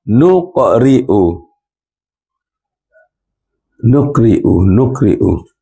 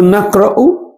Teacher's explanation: ri baca pendek, baca nipis sebab ra baris bawah, ra baris atas baca tebal